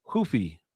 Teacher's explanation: The R sounds like an H in Brazil.